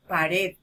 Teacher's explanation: donde estamos haciendo mayor fuerza de voz en la última sílaba en la sílaba red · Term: acento prosódico